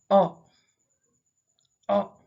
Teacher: from flowing through your vocal tract So when you say oh you release the air through your vocal tract and then you hold it and then you release it again but when you do it halfway you totally fold or restrict